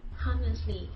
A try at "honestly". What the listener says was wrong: Honestly does not, you don't pronounce the H. You just say honestly, not honestly, honestly.